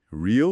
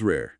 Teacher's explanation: tipo real com aquele som de i mais longo, né? e rare com e aberto